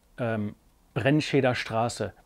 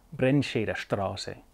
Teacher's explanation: For instance, you may be living in the south of Germany, in Bavaria, or you may be in Austria, where the R sound is typically not from the back of the throat. It's more of a rolled sound.